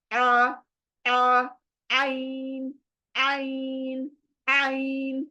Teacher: अभी अभी आगे और बहुत कुछ है ना सीखने का, लेकिन मैं अभी से बता रही हूँ, ये आइन की प्रैक्टिस बहुत ज्यादा करो। ये सिंपल आइन नहीं है, ये हलक के बीच से इसको निकलना है।